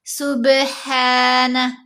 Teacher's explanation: با پر کلکلہ کریں گے